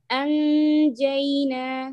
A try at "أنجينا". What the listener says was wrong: I feel you're touching, huh? You should not touch. Close, then touch. The way to know that you're doing it right or no, prolong the ghunna for me.